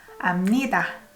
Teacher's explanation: You don't pronounce B here. B sounds more like M.